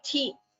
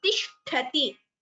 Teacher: Only this tha in the middle is Mahaprana. Ti are alpa pranas. Do not say thi. It is tishtati. Only shtha is Mahaprana.